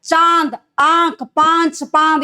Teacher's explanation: नाक और मुंह दोनों से होता है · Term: अनुनासिक